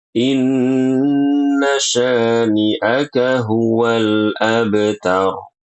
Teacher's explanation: sya itu dibaca dengan shin, bukan inna sani. Inna sani dengan sin, ini keliru. Harus dengan shin.